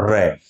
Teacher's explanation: र में जीभ का स्पर्श थोड़ा सा होता है, फिर कंपन होता हुआ नीचे, कंपन होते हुए जीभ नीचे आ जाती है, र का उच्चारण हो जाता है।